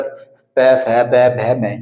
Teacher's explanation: फै में भी हमारे जो दोनों होंठ है एक दूसरे का आपस में संपर्क होया, तब जाकर प, फ, ब, भ, मैं, ये यहाँ पर ये पांचों वर्ण का उच्चारण हम तभी कर सकते हैं अपने होठों की सहायता से। और जब इनका उच्चारण यहाँ पर होठों की सहायता से हो रहा है तो ये बेसिकली कौन से व्यंजन कहेंगे, ये ओष्ठ्य व्यंजन कहे जाते हैं। · दोनों होंठ जो है आपस में एक दूसरे से टच हुए